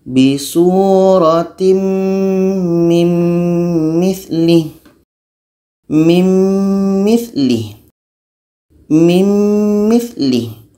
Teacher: Nun mati masuk kepada bunyi mim. Itu namanya idgham kamil, masuk secara sempurna. Nun masuk kepada mim.